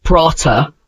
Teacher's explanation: Say the word prata. At the end of the word, you don't stop abruptly. Instead, you softly release a breathy sound like H.